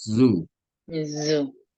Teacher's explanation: La Z cuando pronuncian zoo, hay una vibración, es zoo.